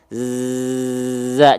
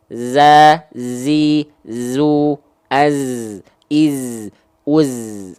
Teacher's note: berdesis tapi desisnya tajam kayak lebah zza jangan bocor desisnya jangan bocor menjadi huruf desis huruf Sin